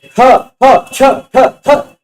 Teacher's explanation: बाहर जो प्रयत्न दिखाई पड़ता है जसे ख छ ठ थ बोलने में ज्यादा हवा निकल के आ रही महा प्राण